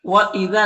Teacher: दाल को बारीक पढ़ेंगे और यहाँ पर अलिफ मद्दा है